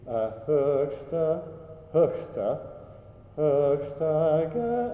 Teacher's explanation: not too much air in that final syllable